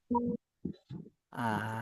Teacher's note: জিহ্বার আগা সামনের উপরে দুই দাঁতের আগার সাথে লাগায়, ঠিক আছে? এবার সামনের উপরে দুই দাঁতের উপরে লাগিয়ে দুই দাঁতের আগার সাথে লাগায় হালকা করে নরম ভাবে উচ্চারণ হবে।